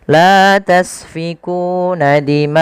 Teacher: Maka kita lihat ma asalnya 2 harakat di ma akum, karena bertemu setelahnya hamzah maka ma-nya menjadi 4 atau 5 harakat. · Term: mad wajib muttasil